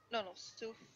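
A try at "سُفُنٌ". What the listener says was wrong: Suf. Sufun. This is Tanween. Sufun. Yes.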